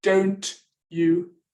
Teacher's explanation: Here you've got don't you, and they seem to blend together to make ch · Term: fusion